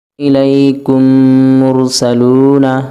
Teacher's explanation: میم ساکن کے بعد میم آئے تو میم کو میم سے ملا کر غنہ کے ساتھ پڑھا جائے گا۔ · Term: ادغام شفوی